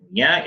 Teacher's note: And the nasal nya is palatal.